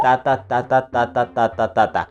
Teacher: ta ta eso es yambo y el bloqueo sería al revés primero empezamos con una sílaba tónica y luego una sílaba átona